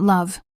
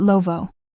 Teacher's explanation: Not love, not clipped at the teeth, but lovo. Open at the end. Breath released.